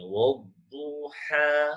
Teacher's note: Dia tak ada lam. Lam ni tak ada fungsi. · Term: idgham syamsi